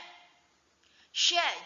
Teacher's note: Sya juga itu menggunakan lidah bagian tengah. Makanya mulut itu harus terbuka biar bisa mengucapkannya dengan leluasa.